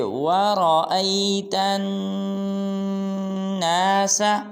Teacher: وَرَأَيْتَن، جب تا کو نون کے ساتھ ملائیں گے تو غنہ کریں گے